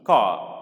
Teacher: this final R is to be silent here.